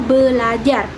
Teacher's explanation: fonem r akan berubah menjadi fonem L sehingga menjadi kata belajar